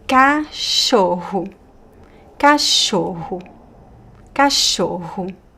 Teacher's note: We have the double r which is pronounced like ha ha ha in the most common accent.